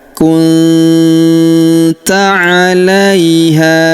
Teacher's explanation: Huruf nun sukun bertemu huruf ta. Maka kita baca dengung dan samar. Huruf nun sukunnya melebur ke huruf ta.